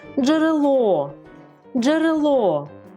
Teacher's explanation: бо в нас три голосних звука наголошений останній склад